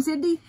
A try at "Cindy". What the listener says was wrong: That sounded like Sydney.